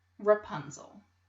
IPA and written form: rəˈpʌnzəl (Rapunzel)